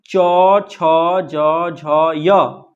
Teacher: जब ये बोलेगा ना तो क्या आएगा? तालु से आवाज आएगा।